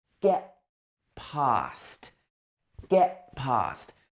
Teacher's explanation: It's like a glottal stop. It's get. It gets cut off in the middle.